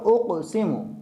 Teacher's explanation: اس میں قاف کا قلقلہ ہے، اس میں ہم قاف کا قلقلہ کریں گے، پہلے درجے کا قلقلہ اس میں کیا جائے گا۔